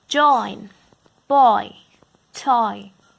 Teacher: contains two vowel sounds in one syllable and it is the second sound with which the syllable ends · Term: diphthongs